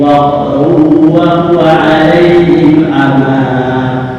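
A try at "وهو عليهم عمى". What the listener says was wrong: Kepanjangan amanya hanya 2 harakat. Ama, titik. Bukan ama, itu kepanjangan masih. Walladzina la yu'minuna fi adhanihim waqrun wa huwa 'alaihim 'ama. Dengung, waqrun wa huwa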